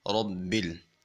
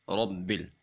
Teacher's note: اب چونکہ با مشدد ہے، با کو خوب سختی کے ساتھ پڑھیں گے، منہ کو ڈھیلا چھوڑ کے نہیں پڑھیں گے، دونوں ہونٹوں کو آپس میں ملا کے خوب سختی کے ساتھ پڑھیں گے، کیونکہ جس حرف کے اوپر شد آ جائے اس کو سختی کے ساتھ پڑھتے ہیں۔